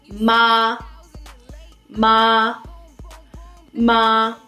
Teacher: third tone is a falling then rising tone it's also known as the valley tone